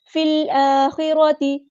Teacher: फ़ा को हमने लाम के साथ मिला देना है, हमज़ा बस ड्रॉप हो जाएगा